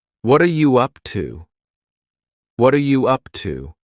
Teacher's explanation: the word what and are are creating a spoken contraction